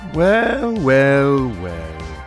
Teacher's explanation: That was a vocal fry there.